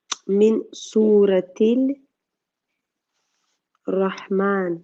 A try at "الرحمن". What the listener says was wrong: don't pronounce the lam because the ra is a sun letter.